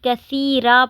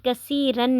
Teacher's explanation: اس پر مد عوض یعنی کہ 1 زبر پڑھی جائے گی، کثیرہ پڑھیں گے، کثیرن نہیں پڑھیں گے جب ہم وقف کریں گے